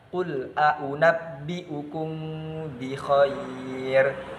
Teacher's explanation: dengan ikhfa, dengan samar antara dengung dan juga jelas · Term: ikhfa syafawi